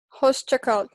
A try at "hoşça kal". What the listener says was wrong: Yeah, but you have to do S and H like a little bit, shh, like so. No, try like when you're saying someone like shh, like hoşça kal.